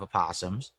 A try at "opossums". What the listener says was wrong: That's not how you say that word. The O is silent.